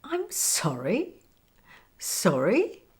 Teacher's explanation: Intonation goes down on so and up on re.